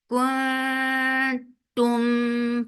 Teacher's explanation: Tum for dhamma circle lips, and give very sharp sound on ta. No humps, no flow of breath, so ta is very sharp. and give tawassut on meme.